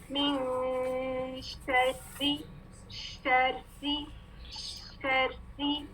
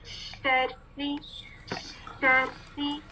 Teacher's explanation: جب ہم شین ادا کریں گے تو آپ کو یہ شاورنگ ساؤنڈ محسوس ہونا چاہیے